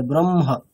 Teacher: কেমন হবে আগে ম তারপরে হ · আগে বর্গের পঞ্চম বর্ণটা হবে, তারপরে হকারটা হবে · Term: বিপরীত ক্রমে